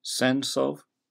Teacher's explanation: Placing emphasis on the first, not the second syllable, creates what's called a troche